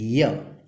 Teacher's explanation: Here the front of the tongue is raised in the direction of hard പാലറ്റ്. ഇവിടെ front of the tongue നേരെ hard പാലറ്റ് നേരെ വരും. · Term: പാലറ്റൽ സൗണ്ട്